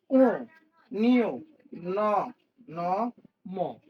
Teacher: যেগুলো উচ্চারণ করার সময় নাক দিয়ে বাতাস বের হয়, এগুলো বলে হচ্ছে নাসিক্য।